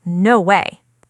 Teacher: The voice is lower and firmer. No smile, no playful energy.